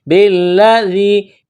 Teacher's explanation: با کو لام کے ساتھ ملانا ہے، لام میں سختی کرنی ہے · ذال کو یا کے ساتھ ملائیں گے، ذال کو باریک کریں گے